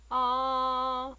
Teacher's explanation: the first tone is long and flat